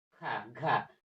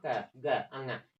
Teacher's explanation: जब ख और घ बोलते हैं आपके मुख से ज्यादा हवा निकलती है लेकिन क ग अंग इन तीनों को बोलेंगे आपके मुख से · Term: महाप्राण